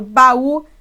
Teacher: O U se tornou mais forte que o A, estando depois dele. Então, ele também é uma vogal, assim como o A também é. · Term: hiato